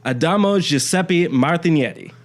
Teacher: the G basically turns it into this weird Y sound